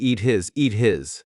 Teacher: we need to cut off the H for the word his · the final T is changing to a D